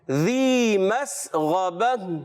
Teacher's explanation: اب آواز آئی زی نہیں، ذی پڑھنا ہے